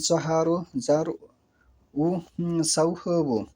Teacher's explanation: বর্ণ তিনটি জিহ্বার ডগা ও উপরের সমক দাঁতের অগ্রভাগ হতে উচ্চারিত হয় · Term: জোয়া জাল সা